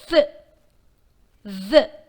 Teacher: The other fricative sounds, th and th, are produced when the tip of the tongue touches the front teeth ridge.